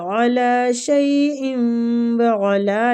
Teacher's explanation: شیء و ادغام مال غنہ ہو رہا ہے